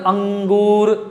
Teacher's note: मुंह से हवा निकल रहा है, नाक से भी निकल रहा है, और आवाज का आपको लगेगा कि मुंह से भी बोल रहे हैं और नाक से भी बोला जा रहा है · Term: अनुनासिक